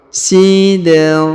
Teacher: Huruf dal dipantulkan ya. Dipantulkan karena berharokat sukun. Sidratil. Huruf ti langsung ke huruf lam yang ini yang berharokat sukun.